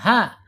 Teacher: Makhrajnya ada di tengah, ada di bawah tenggorokan